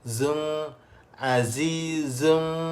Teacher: Kalau zai ni ada sofir.